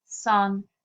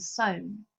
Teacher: In this poem, for example, sun and sown, where you can see the vowel has shifted, but the first and last consonants, S and N, are the same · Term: Full pararhyme